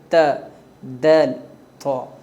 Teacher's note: ان تینوں کا مخرج زبان کی نوک سامنے کے اوپر کے دانتوں کی جڑ ہے۔ تا پتلی ہوتی ہے اور طا کو پر پڑھا جاتا ہے۔